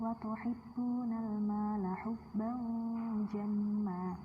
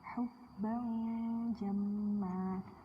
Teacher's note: Jadi kalau ada non mati atau tanwin bertemu dengan salah satu huruf 15 ini, nanti bacanya kayak samar-samar, ada dengung-dengungnya gitu, tapi tipis gitu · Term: ikhfa